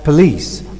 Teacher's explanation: in police, the vowel after p is omitted here. Normally, there is a general tendency to pronounce it as police, or a sequence of both.